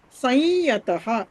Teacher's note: యా వస్తే అనునాసిక యకారం సంయతః అనేది చదవాలి